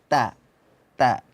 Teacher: Ta itu posisi lidah harus pas berada di urat gigi. Kalau ibaratnya jari saya ini gigi, maka kalau ini lidah harus tepat pas di belakang gigi seri paling atas.